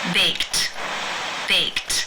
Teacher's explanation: the final sound of the verb in the infinitive form to bake is the k sound it's unvoiced therefore the Ed is pronounced unvoiced with the T sound